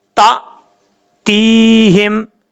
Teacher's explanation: حمزہ ساکن جو ہے وہ جھٹکے سے پڑھا جاتا ہے